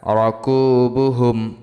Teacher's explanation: র জবর র, কাপ পেশ কু, বা পেশ বু, হামিম পেশ হুম, রকুবুহুম, হুম গুণ্য হবে না, ইজহারে খাস